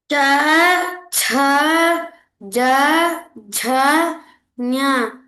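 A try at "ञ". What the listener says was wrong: Don't tell ya, nya, nya. Cha, cha, ja, cha, nya. You should not make ya sound. Na. Cha, cha, ja, cha, na.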